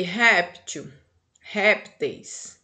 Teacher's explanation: a primeira sílaba aqui, tá? A sílaba forte é rep, tá? O P faz parte dessa sílaba aqui, tá certo?